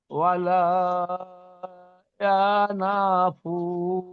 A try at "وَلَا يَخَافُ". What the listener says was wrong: আবার না বলছেন খ, খ, ওয়ালা ইয়াখাফু।